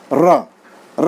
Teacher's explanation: लुंठित व्यंजन र है। र बोलते समय निश्चित रूप से घर्षण होता है और कंपन होता है हमारे जीव में, र बोलते हैं, तो इसलिए इसको लुंठित व्यंजन बोलते हैं।